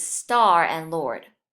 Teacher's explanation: this R gives the vowel a special sound that's neither long nor short